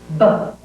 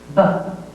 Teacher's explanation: The lips are pushed together and they are exploded, and there is tone.